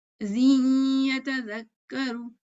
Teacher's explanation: जीन, यह जिन में नून की आवाज है, छुपी हुई है, और या में तो नून और या मखरज पास पास है ना, इस वजह से हम इदगाम कर रहे हैं। तो यौमइज़िन या तज़क्करू, ये कहना जरा मुश्किल होता है, जिन या मुश्किल है।